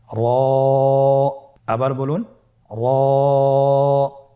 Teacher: র হরফটি এখানে আমরা পোর করে উচ্চারণ করব, মোটা করে উচ্চারণ করব এবং র হরফটি এক আলিফ টেনে পড়ব